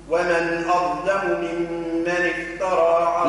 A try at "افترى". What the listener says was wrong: لا كيف أقول افترى ايش عمل في التاء فخمها افترى افتاء افتاء تاء مش طاء